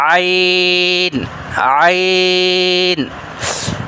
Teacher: تو یہ دیکھ رہے ہیں آپ، عین عین، یہ عین ہے، یہاں سے ادا ہوتی ہے، حلق کے درمیانی حصے سے ادا ہوتا ہے۔ حلق کا درمیان والا حصہ تھوڑا سا دبائیں تو تب بھی یہ جیسے ہم کپڑے دھوتے ہیں نا تو ان کو تھوڑا سا نچوڑتے ہیں، تو عین اس کو تھوڑا سا اس طرح پڑھیں گے۔ · وسط حلق، درمیانی حصہ، middle part of the throat. تو یہ دیکھ رہے ہیں آپ، عین عین، یہ عین ہے، یہاں سے ادا ہوتی ہے، حلق کے درمیانی حصے سے ادا ہوتا ہے۔ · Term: حرف عین